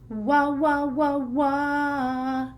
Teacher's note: the last sound from that category of the bilabials, 2 lips, and that is the w sound